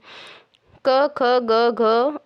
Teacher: ये कंठ से बोले जाने वाले हैं